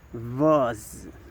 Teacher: the voicing is voice. and the place of articulation is alveolar. And it is the Z sound.